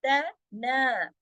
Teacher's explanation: और तना, तना, दोनों बारीक, और ना को एक अलिफ मद्दा भी खींचना है, और 2 हरकत, और ऊपर जो मद है उसका भी हक अदा करना है।